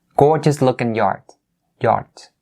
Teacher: we drop that g sound at the end of looking and just say lookin'